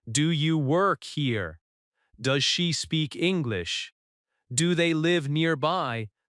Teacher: English questions usually have a rising tone at the end. This rise in tone signals that you are asking, not telling.